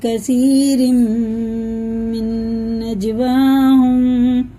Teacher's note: تنوین کے بعد میم پہ شد ہے تو یہ غنہ ہوئے گا، یہ ادغام ہے، اور یہ نون ہجے میں لگائیں گے، رواں میں نہیں لگائیں گے، اور جیم میں ہے قلقلہ.